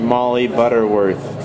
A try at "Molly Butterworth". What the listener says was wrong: You say my name wrong, it's hard to repeat it. Because the vowels are hard in a different place. It's just Molly Butterworth. Molly Butterworth, it's softer.